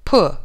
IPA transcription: pʊ